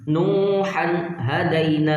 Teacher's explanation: یہاں تنوین کے بعد حرف حلقی میں سے ہا تو یہاں غنہ نہیں کریں گے